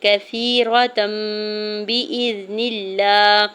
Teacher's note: را کے زبر کو بغیر کھینچے ہوئے ادا کریں گے تاکہ اوپر دو زبر کی تنوین ہے اور اوپر چھوٹی سی میم ہے، تو یہاں پر اقلاب کا رول اپلائی ہو رہا ہے اور یہاں پہ تنوین کو میم میں بدل کے پڑھیں گے